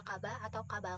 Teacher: mereka mungkin mengubahnya menjadi kata kaba atau kabal karena kesulitan dengan bunyi R